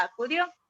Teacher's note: la sílaba dio sí porque tiene la mayor fuerza de voz